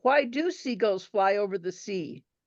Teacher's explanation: She repeated the question, but she stressed do.